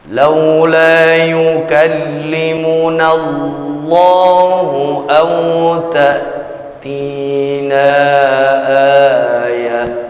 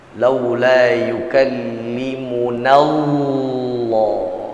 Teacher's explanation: Allah dibaca dengan cara menebalkan lafzul jalalah yang kita ucapkan. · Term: Baca tebal